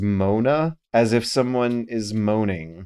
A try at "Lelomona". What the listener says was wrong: But it's spelled M-O-N-A. Not moan. Mona. Like Mona. Monique.